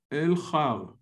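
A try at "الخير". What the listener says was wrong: No, but you have a ya here. Yeah, and you have to spell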